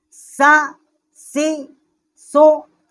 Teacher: ان تینوں کا مخرج جو ہے زبان کی نوک ثنایا علیہ کی جب سرا سے ٹکر کھاتی ہے تو اس سے یہ تینوں حروف جو ہیں وہ ادا ہوتے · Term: لسویہ